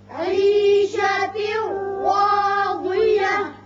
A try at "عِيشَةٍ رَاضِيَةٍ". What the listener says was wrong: راضية نہیں ضاد نہیں ضاد عيشة راضية